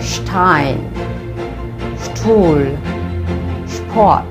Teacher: Wusch. If there is a S in front of a P or a T, it'll be pronounced like sh as well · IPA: [ ʃ ]